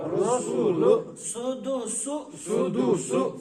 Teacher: پیش کی آواز کو معروف پڑھنا ہے اور مجھول آواز سے بچنا ہے اور پیش میں ہونٹوں کو گول کرنا ہے